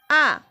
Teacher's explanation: সেই জন্যই একে বলা হয়েছে কি উচ্চ স্বরধ্বনি পরের ভাগে আ এই স্বরধ্বনির উচ্চারণের সময় জীভের অগ্রভাগ একেবারে নিম্নে অবস্থান করে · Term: নিম্ন স্বরধ্বনি